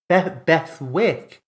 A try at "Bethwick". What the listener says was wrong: But it's like a silent W, so it's like a Bethic.